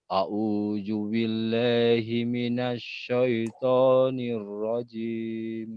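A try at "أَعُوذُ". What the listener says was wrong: Bukan a'udzu ya, tapi a'udzu zal. Kalau zal itu lidahnya itu digigit sedikit, Pak. A'udzu zazizu baz. Seperti itu. Karena memang ini adalah sudah berbeda dari makhrajnya. A'udzu sama a'udzu beda.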